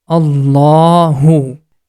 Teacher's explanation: have to pronounce this La sound with thick sound and also the last sound becomes for two count because of the Hidden small alif